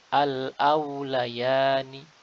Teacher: pengucapan huruf waw sakinah yang sebelumnya fathah. Pastikan bibir kita menguncup